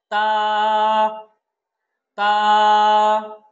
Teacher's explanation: তা হরফটা যখন আমরা উচ্চারণ করব তখন জিহ্বার আগাটা উপরের দাঁতের গোড়ার সাথে লাগিয়ে আমরা বলবো এবং এক আলিফ টানবো।